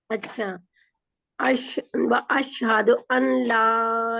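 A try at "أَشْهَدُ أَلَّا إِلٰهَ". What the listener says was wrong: अल अल अन नहीं, नून गायब है, नून डिलीटेड है। अल्लाह इलाहा व अशहदु अल्ला इलाहा इल्लल्लाह।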